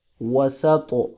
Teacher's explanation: سین پہ سیٹی ہے، طا پہ قلقلہ ہے اور موٹا بھی کریں گے